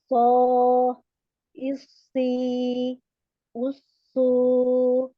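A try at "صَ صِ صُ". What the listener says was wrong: Tebalkan lagi. Aso, isli, usu. Tetap tebal ya.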